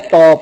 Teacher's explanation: हमारी जो जुबान है वो एल्वेलर रिज में आकर लग रही है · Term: एल्वेलर साउंड्स